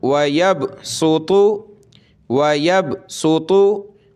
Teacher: बा ज़ेर भी, ज़ाद पेश ज़ु, यक़बिज़ु व यबसुतु, ठीक है। यहाँ आपने साद पढ़ना है और ता पढ़नी है, दोनों को मोटा करना है , साद पेश सु, ता पेश तु, व यबसुतु, व यबसुतु,